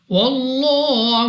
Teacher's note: لام اف اللہ سے پہلے حرف پر زبر, اس لام اف اللہ کو بھی پر پڑھیں گے اور کھڑی حرکت کی وجہ سے 2 سیکنڈ تک لام کو کھینچا بھی جائے گا. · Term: پر یعنی موٹا